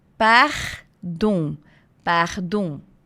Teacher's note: Já vão se acostumando com o R em francês, que sempre é raspadinho aqui na garganta